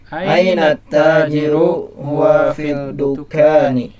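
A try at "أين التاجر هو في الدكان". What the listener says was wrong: Lihat, bukan fil dukani, tapi apa? Fid dukani. Lamnya melebur ke huruf dal. Kenapa? Karena huruf dal ini termasuk di antara huruf syamsiyah ya, sehingga ketika ada alif lam, lamnya melebur, tidak terbaca, bukan fil dukani tapi fid dukani ya.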